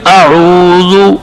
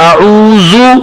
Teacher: اب کسی کی آواز اگر زے کی طرح اعوذ, یہ غلط آواز ہے. ذال کی جگہ زا کی آواز, تیز آواز نکالنا, یہ غلطی ہوگی. تو ذال کی آواز نرم پڑھیں گے.